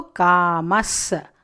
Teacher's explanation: The visarga becomes sakara.